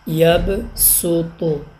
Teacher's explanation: صاد کے اوپر سین چھوٹی سی لکھی ہوئی، یہاں اس حرف میں صرف سین کو پڑھیں گے